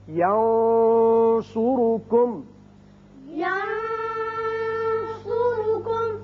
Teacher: یہاں دیکھیے نون پر آپ نے آواز تھوڑی سی گول کر کے موٹی سی نکالی ہے، وہ صاد کی وجہ سے، صاد حروف مستعلیہ میں سے، ینصرکم۔ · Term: اخفاء